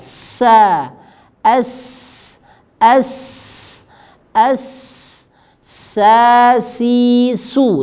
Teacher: Sama tempat keluarnya ujung lidah dengan gigi seri bawah. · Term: sin